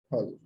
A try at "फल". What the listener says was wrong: हाँ, जो पूरा प वर्ग है, वो पूरा प वर्ग दोनों होठों को बंद करके उच्चारण किया जाता है। प, ह, ब, भ, म। ऐसा नहीं हो सकता कि प के बाद फ हो जाए, दांत को होठ से मिलाया जाए, वो गलत हो जाएगा। ठीक है, पूरा प वर्ग जो है वह दोनों होठों को मिलाकर ही उच्चारण करना।